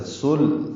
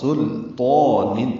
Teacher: اس تو پر کی وجہ سے لام بھی لوگ پر کر دیتے ہیں، سلطان پڑھتے ہیں، یہ غلط ہے. سل سین لام باریک، تو پر